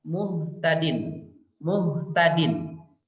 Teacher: Misalnya ketika mengucapkan huruf H, muhtadin, muhtadin, dia tidak tertahan, seperti huruf syiddah, tapi dia mengalir bunyinya itu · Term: rokhawah